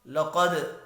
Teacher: وَهَذَا الْبَلَدِ الْأَمِينِ لَقَدْ خَلَقْنَا الْإِنسَانَ فِي أَحْسَنِ تَقْوِيمٍ، لقد قاف حروف مستعلیہ ہے، پر پڑھا جائے گا۔ دال ساکن پر قلقلہ کریں گے